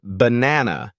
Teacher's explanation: in the word banana the first and last a are pronounced as a schah so it sounds more like bu this sound may seem small